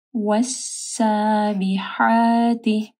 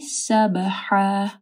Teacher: با کے اوپر کلکلا ہوگا اور ہا کو جو ہے واضح پڑھنا ہے، دو زبر ہے تو اس کے اوپر ہم لوگ وقف کریں گے، ایک زبر ہٹ جائے گی، ایک زبر کو پڑھنا ہے، سبحا.